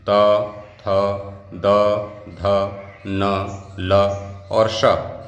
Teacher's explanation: इनका उच्चारण स्थान क्या है दंत है